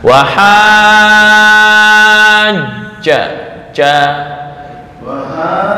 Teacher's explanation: jim yang bertasydid, jim itu makhrajnya di tengah lidah ya. Ja, bukan ja.